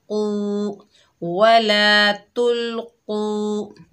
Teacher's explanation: कौफ मोटा अदा होगा, हैवी लेटर है